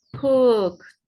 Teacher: el sonido final de ese verbo es un sonido que no vibra, es una consonante que no vibra. La K no vibra, entonces la voy a utilizar, va a sonar este como una T.